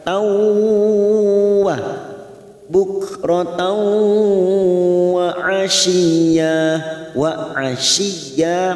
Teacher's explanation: Wa asyiya, masuk ke huruf ya yang bertasdid tanpa ditekan lama-lama, hanya masuk asyiya. Ya-nya kita panjangkan 2 harokat mat iwad karena ada fathah tanwin, fathatain yang dibaca waqaf.